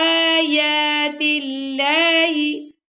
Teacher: اللہ کے لام سے پہلے اگر زیر آ جائے تو اللہ کے لام کو باریک پڑھتے ہیں.